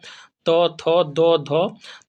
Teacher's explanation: जिन व्यंजन के उच्चारण में जिह्वा की नोक ऊपरी दांतों को स्पर्श करती है दंत व्यंजन कहलाता है